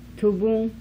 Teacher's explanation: Uvular nasal final consonant.